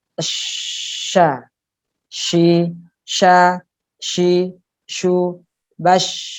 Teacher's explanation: Shin yang jelas agak renggang. Kenapa? Karena di situ ada desis, ada nafas, ada udara yang keluar, terdengar desis. Maka yang jelas harus renggang.